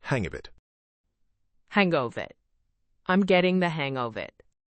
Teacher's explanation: In fast speech, get the hang of can sound like get the hang a.